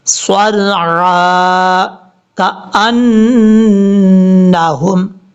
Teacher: نون کے اوپر شد ہونے کی وجہ سے غنہ ہے، یہاں پر ایک الف کی مقدار غنہ کریں گے.